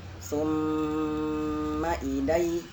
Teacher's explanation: Di sini mim tasydid wajib digunnahkan atau ditahan.